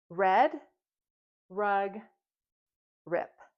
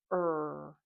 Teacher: our mouth is slightly open. Our tongue is pushed back, but doesn't touch the roof of our mouth, and that it's a voice sound. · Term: consonant R